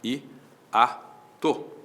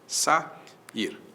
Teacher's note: Você já aprendeu o que é ditongo, o que é hiato, no volume relativo a grafia, mas eu repito. Hiato, vogais que vêm em sequência e que se separam, ficam em sílabas distintas